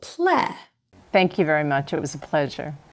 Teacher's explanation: do you hear the words thank and pleasure receive the stress specifically the first syllable